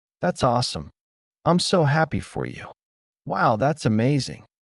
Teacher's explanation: Notice how native speakers use tone. It goes up at the end to express happiness. Emotion in your voice shows interest and excitement more than the words themselves.